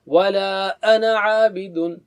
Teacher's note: انا کے بعد جو ہے نا مد ہے، الف مد، لیکن اس کو نہیں پڑھا جاتا روانی میں